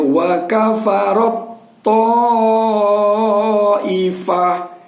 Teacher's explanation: Ini begitu juga, tanya bertemu dengan to, tetapi pada saat bunyinya, pada saat kita membunyikan suara ro ini, wa kafarat to, huruf yang pertama masuk ke dalam huruf yang kedua, sehingga yang terdengar adalah suara to-nya, sehingga suara ta-nya ini tidak kita dengarkan. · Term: idgham mutajanisain